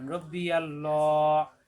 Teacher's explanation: লামে তাজদি দুইবার, পরের লামে খাড়া যাবর এক লিপ টান